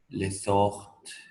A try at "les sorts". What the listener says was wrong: Le sort, hein? La T no se oye.